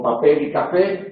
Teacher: acento pueden ser oxítonas o agudas como papel y café porque la palabra que lleva el acento independientemente de que hay tilde o no hay tilde es la última sílaba